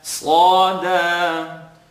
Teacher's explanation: So Sad is heavy, second part of the tongue.